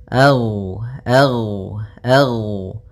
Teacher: ghain termasuk salah satu sifat huruf yang dia adalah sifat rakhawah yang di mana suaranya mengalir